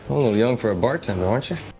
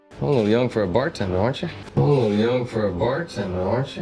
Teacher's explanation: The word you is reduced to a schwa sound, uh. Then the letter T in aren't is pronounced as a ch sound, so we hear aren't ya.